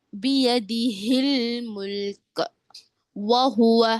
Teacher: چھوٹی ہا ہے. اس کا مخرج کیا ہے؟ حلق کا آخری حصہ، اقصائے حلق